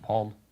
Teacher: I guess he doesn't pronounce the L.